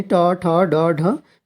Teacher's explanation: मूर्धन्य का मतलब ये है कि जीभ जो है मुड़ जाती है, मूर्धन्य, यानी ट, ठ, ड, ढ, इसमें जीभ मुड़ जाती है।